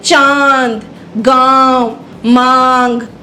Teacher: अनुनासिक का निर्धारित चिन्ह चंद्र बिंदु है। इसके उच्चारण में हवा नाक और मुंह दोनों से टकराकर निकलती है। जैसे चांद, गांव, मांग, आ की जब आवाज आती है तब अनुनासिक का प्रयोग होता है।